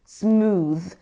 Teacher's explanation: So when pronouncing it, make sure you are vibrating slightly as you say the th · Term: voiced sound